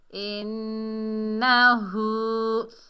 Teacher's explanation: ہم آواز کو ناک میں روکیں گے، اسے کیا کہتے ہیں غنہ